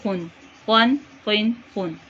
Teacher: خو پور موٹا حلق کے اوپر والے حصے سے 1 الف کے برابر لمبا کریں گے